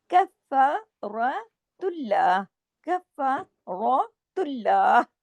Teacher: देना, रा को हैवी करना है जबर की वजह से